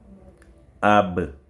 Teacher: L'enjeu de Baoun, c'est au niveau des deux lèvres. C'est-à-dire la sortie de Baoun, ce sont les lèvres.